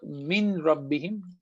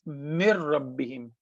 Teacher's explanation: Noon is gone, and we connect meme to ra, mir rabbihim. So noon as a letter is gone, and the sifa, the attribute, the quality of noon, which is the gunna, is also gone.